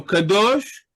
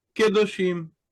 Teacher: An open syllable pre-tonic, that is before the accent, reduces into the moving shava when further put one syllable even further away because of the adding of the plural ending.